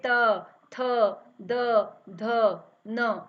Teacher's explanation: इन वर्गों के उच्चारण में जिह्वा जो है हमारे दांतों से स्पर्श हो रही है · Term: दंतव्य वर्ण